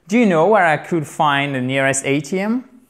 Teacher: Parce qu'une réponse yes-no, une yes-no question, une réponse à laquelle on peut répondre par oui ou par non, on remonte l'accentuation sur la fin de la question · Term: Rising tone